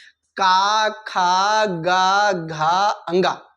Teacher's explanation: का वर्ग कंठ से स्पर्श होते हुए बाहर आवाज आती है